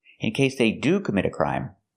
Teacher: We're using do here in a positive statement to show emphasis, so we want to stress the word.